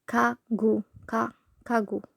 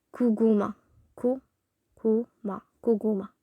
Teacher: when giyak is at the middle of a word, it's more close to g